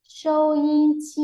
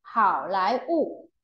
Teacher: Tức là âm tiết thứ nhất được đọc nhấn rộng và kéo dài vừa phải. Âm tiết thứ hai được phát âm nhẹ và nhanh. Còn âm tiết thứ ba thì đọc nhấn mạnh và kéo dài nhất. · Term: nhấn vừa, đọc nhẹ, nhấn mạnh